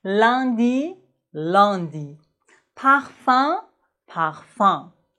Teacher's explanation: Dans le sud de la France, il existe une autre voyelle nasale pour UN et UM. À la place de dire un, ils disent en.